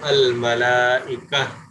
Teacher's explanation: گول تا کے اوپر وقف کریں گے تو گول تا جو ہے وہ ہا بن جائے گی